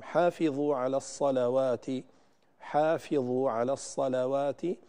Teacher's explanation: اللام هنا مرققة دائما